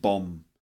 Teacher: the B at the end is silent, so we end up with bomb. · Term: silent letters